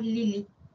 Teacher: la vocal I es una vocal alta anterior